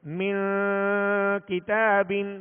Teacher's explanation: ایک الف کی مقدار یہاں غنہ کر کے پھر پڑھیں گے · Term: اخفاء